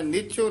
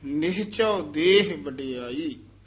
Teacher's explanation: ਨਿਹਚਉ ਹਹਾ ਵਿੱਚ ਬੋਲਣਾ ਨਿਚੋ ਨਹੀਂ ਕਹਿ ਦੇਣਾ